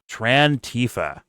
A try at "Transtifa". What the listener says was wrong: No, there's an S in there.